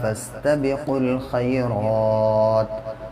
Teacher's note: قاف کو آپ ڈائریکٹ لام سے ملائیں گے۔